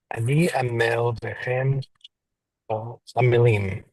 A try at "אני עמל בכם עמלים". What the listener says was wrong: Beautiful.